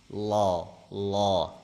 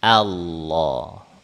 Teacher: Nah, kalau dari ujung lidah ketika lafaz Allah tebal itu lafaz Allah itu ujung lidahnya ada di ujung gusi gigi seri atas.